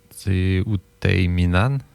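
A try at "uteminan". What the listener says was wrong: On entend le H, hein? Le H, on l'entend. Oui, Otehiminan.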